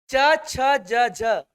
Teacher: च छ ज झ स्पर्श तो कर ही रहा है, स्पर्श के साथ साथ संघर्ष भी कर रहे हैं